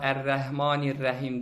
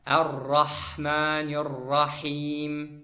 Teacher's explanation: Bəzi insanlar Ər-Rəhmanir-Rəhim deyirlər. Ra hərfi isti'la qalın hərfdir. Fəthəli mütləq, daim qalın oxunur. Ər-Rahmanir-Rahim.